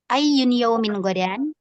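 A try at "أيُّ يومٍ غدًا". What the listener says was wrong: Ayu yaumin hudan. Iya, tidak ada tanwinnya ini ya.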